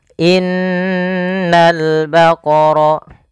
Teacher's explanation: menahan dulu suara n-nya sepanjang 2 harakat baru dilepas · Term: gunnah